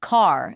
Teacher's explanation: American English accents are rhotic, meaning the R is pronounced strongly. So car sounds like car, and father has a definite R sound at the end.